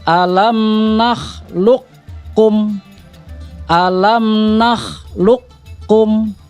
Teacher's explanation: huruf qalqalahnya itu akan dilebur kepada huruf kaf, artinya hilang. Jadi akan masuk ke huruf kaf. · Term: qaf sukun